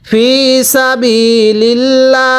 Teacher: এখানে আল্লাহ শব্দের পূর্বে জের আল্লাহ শব্দকে চিকন করে পড়ব